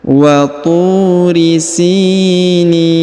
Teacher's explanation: Perhatikan huruf tu dipanjangkan 2 harokat karena di depan huruf tu terdapat waw sukun atau waw mati.